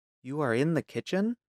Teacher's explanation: A statement with a rising tone becomes a question.